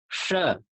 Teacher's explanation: तो श के उच्चारण में हम अपनी जिह्वा को ताल से स्पर्श करें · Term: तालव्य स